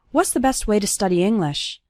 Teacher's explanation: You can see that the word to becomes ta, and it's just barely pronounced at the end of way.